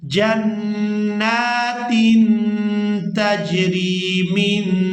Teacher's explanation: नून साकिन पर हम इख्फा करेंगे, यानी नून की आवाज़ को नाक में छुपाकर अदा करेंगे